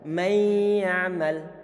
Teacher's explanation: makhraj bagian lidah untuk huruf nun telah dilebur pada huruf berikutnya, sehingga suara nunnya enggak terdengar sama sekali.